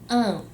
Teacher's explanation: A palavra não tem o tio apenas para marcar esse processo de nasalização, para marcar que não é um A, e sim um an.